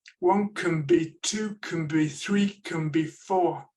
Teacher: notice how the n sounds a lot like an M when it comes before a b